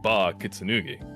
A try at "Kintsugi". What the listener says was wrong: That's pronounced Kintsugi. Kintsugi. 3 syllables. Kintsugi. Kintsugi.